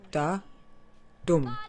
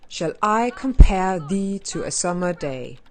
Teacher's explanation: a rhythm where each line consists of five yums which is a metrical foot with an unstressed syllable followed by a stressed syllable